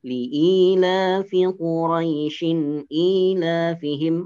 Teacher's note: maka Quraisynya tidak dibaca panjang